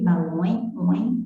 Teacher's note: Você percebe que esse E soa como se fosse um I, balões, oin, então ele é semivogal.